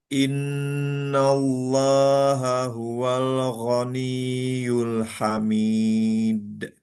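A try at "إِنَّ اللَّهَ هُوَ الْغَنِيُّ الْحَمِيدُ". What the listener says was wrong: Ah, lamnya tadi sedikit mantul. Huwal gho. Huwal ghaniyul hamid.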